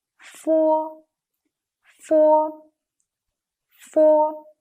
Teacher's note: other teeth make a large contact with the lure tip and the air is released in between with friction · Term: voiceless sound